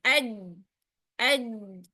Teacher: syiddah jahr penyebabnya adalah karena tertutupnya makhraj pada huruf jim secara sempurna. Sebab tengah lidahnya menempel pada langit-langit mulut. · Terhamparnya sebagian besar lidah. Hanya tengah lidah kita yang terangkat untuk menyempurnakan makhraj huruf jim saja. Hati-hati pada makhraj huruf jim adalah pastikan tengah lidah kita yang terangkat. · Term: istifal